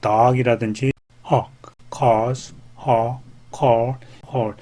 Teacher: dog이라든지 hawk, cause, haw, call, hold 이런 것들이 입을 크게 벌린 오 소리로 납니다. 그래서 홀이 아니라 헐 이런 식으로 나죠.